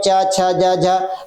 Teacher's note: जीवा तालू से चिपक गई है ना और वही पर उच्चारण कर रही है हट नहीं रही है मतलब यह क्या हो जाता है घर्षण करते हुए उच्चारित हो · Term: घर्षण व्यंजन